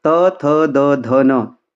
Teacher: जो त वर्ग के जितने भी हैं ये सब क्या होंगे? ये सब दंत हैं।